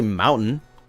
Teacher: I don't pronounce the T sometimes